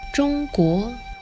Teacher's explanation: with a high flat tone and a rising tone. And in Cantonese it's pronounced 中 国 with a high flat tone and a mid-flat tone.